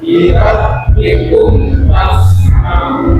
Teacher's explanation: Jadi ada mim mati ke depan ada huruf fa, namanya idhar syafawi. Bacaannya putuskan, kum fas maun, ya.